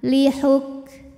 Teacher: Kaf dalam keadaan sukun keluar dulu suaranya nanti angin belakangan